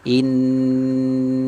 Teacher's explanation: ada Nun musyaddadah berarti tertahan suaranya sekitar tiga ketukan